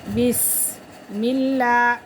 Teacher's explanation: لفظ اللہ کی لام سے پہلے زیر ہے تو اسی لیے لفظ اللہ کی لام کو باریک پڑھیں گے